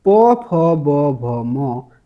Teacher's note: जो प वर्ग है ये ओष्ठ व्यंजन है। किससे बोले जाते हैं? ओष्ठ द्वारा बोले जाते हैं।